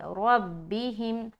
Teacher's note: خیال رہے کہ اس را کو ہمیں موٹا پڑھنا ہے کیونکہ اس کے اوپر کیا ہے، زبر ہے